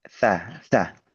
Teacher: huruf ta itu sangat kuat sangat kuat tertahan beda dengan huruf sa itu mengalir